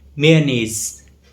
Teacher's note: In British English, the stress is on knees, the second part of the word